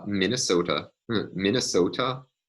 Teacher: the tap is applying inside the same word